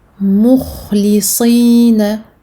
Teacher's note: il faut vraiment faire le tafkhim du kha et surtout celui du sad qui malgré la kasra doit rester mufakhama, bien qu'au dernier degré, mais quand même mufakhama.